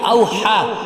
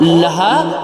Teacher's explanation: اب دیکھیں دونوں ہا جو ہے یہاں پر آ رہی ہے، ایک حلق سے نکلے گی ہا، یہ اوحا، اور لہا یہ سینے سے ادا ہوگی